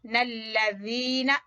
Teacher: ज़ाल नरमी से पढ़ेंगे और खींचेंगे या मद्दा की वजह से